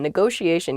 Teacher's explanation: Negotiation. Yeah, there are two T's in this, but neither T is a hard T. They're both very soft, that sh sound, because they're followed by the I and another vowel, the she.